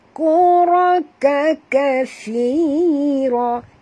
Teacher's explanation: Ra tebal, ka tak tebal. Ra yang ni tebal.